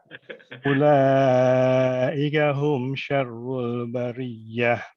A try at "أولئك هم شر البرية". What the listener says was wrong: Ini mengenai hamzah, untuk setiap hamzah itu hendaknya dia dikasarkan. Contohnya di sini ulaika ika. Ada 2 hamzah. Ulaika ika.